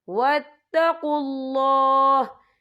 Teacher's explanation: وقف کی صورت میں ہا ساکن ہو جائے گا